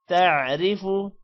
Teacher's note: زیر کو لمبا نہیں را کو موٹا نہیں کریں گے زیر کی وجہ سے